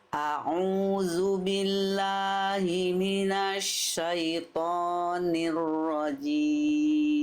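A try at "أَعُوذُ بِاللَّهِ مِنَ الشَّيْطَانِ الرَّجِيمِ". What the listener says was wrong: pengen kita maksimalkan lagi di huruf lam jangan billah. Billah. Lam itu huruf tipis jangan lo. Tapi la lidahnya dalamnya rileks ya. Billah, jangan billah. Billah ya. A'udzu billahi minasyaitoni.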